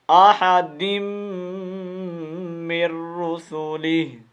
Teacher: یہ نون تنوین ہے جو اس کو ہم نے ڈائریکٹ میم کے ساتھ ملانا ہے